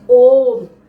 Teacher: और प्लुत समय में 3 गुना उच्चारण करते समय 3 गुना समय लगता है